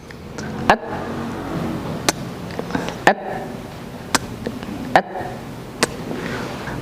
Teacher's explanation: Karena ketika lepas dia berupa aliran nafas, atau kita lebih senang menyebutnya dengan percikan nafas, karena nanti untuk nafas ini ada dua kategori. Ada nafas yang sifatnya mengalir, ada nafas yang sifatnya percikan saja, yaitu untuk huruf ta dan juga untuk huruf kaf.